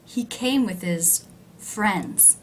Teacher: The word with, a preposition, low in pitch, unstressed. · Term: function words